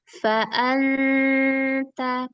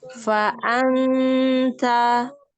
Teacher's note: Pangkal lidahnya jangan naik ya.